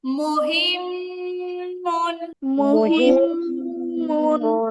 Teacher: মিমের মাখরাজ দুই ঠোঁটের শুকনো জায়গা মিলাতে হবে